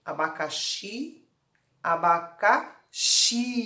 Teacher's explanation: com a legenda a laranja para as palavras oxítonas isto é a sílaba tônica na última sílaba · Então, a sílaba tônica é o xi